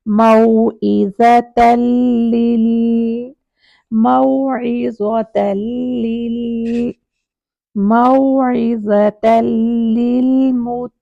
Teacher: تنوین کا نون چھپا ہوا ہے وہ لام کے اندر اس طرح سے مرج ہو جائے گا کہ اپنی ساؤنڈ ختم کر دے گا. تو پڑھیں گے موعظتن سے موعظتل لل موعظتل لل موعظتل للمتقین.